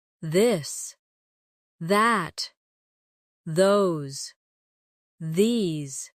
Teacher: Now practice the softer version of th where you let your tongue touch your teeth lightly but use your voice.